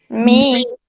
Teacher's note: M is voice, bilabial, and nasal.